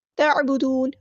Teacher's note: عین کو وسطی حلق میڈل تھروٹ سے ادا کرنا ہے، چھٹکا نہیں لے کرنا. تعبدون نہیں پڑھنا.